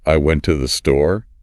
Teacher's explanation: I'd probably emphasize went and store. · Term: sentence stress